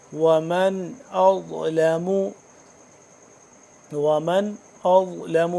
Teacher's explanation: نون ساکن ہے، غنہ کیوں نہیں کر رہے؟ کیونکہ اس کے آگے حمزہ ہے حروف حلقی، اس کی وجہ سے ہم غنہ نہیں کر رہے